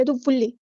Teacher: یہاں پہ ایک ادغام مع غنہ نہیں ہو رہا بلکہ ادغام بلا غنہ ہو رہا ہے، تو اس لیے ہم ٹائم نہیں دیں گے